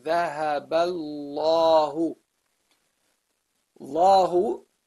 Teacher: the first lam is ignored. It doesn't have any accents on top of it or below it, so we really don't really pronounce it